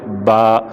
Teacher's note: یہ تینوں جو ہے نا، ان میں ہونٹوں کا دخل ہے، اس میں بھی ہونٹوں کا دخل ہے، ان تینوں میں خالص ہونٹوں کا دخل ہے۔ با دونوں ہونٹوں کے تر حصہ سے، تر حصوں کو ملائیں گے تو با